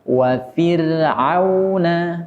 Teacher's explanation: huruf ra yang sebelumnya huruf kasrah, maka ra sukun dibaca tipis. Wa fir'auna, tidak boleh dibaca tebal.